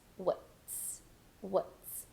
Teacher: straight to a very neutral vowel sound the schah w w do a very reduced and soft t with an S